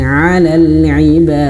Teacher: Kemudian 'alal 'ibad ini panjang ya, sampai 5 atau 6 harokat pun boleh nih, karena mad arid lisukun.